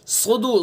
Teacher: साद को पुर करेंगे चूँकि हरूफ मुस्तालिया में से है